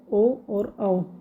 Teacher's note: कंठ और ओष्ठ से कौन से स्वर बनते हैं? तो कंठ और ओष्ठ से हमारे ओ और औ ये बनते हैं